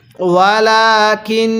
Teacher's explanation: নুন লাগবে শিনের সাথে, কাপ লাগবে নুনের সাথে, এবং এই নুনের মধ্যে আমরা গুনাহ করব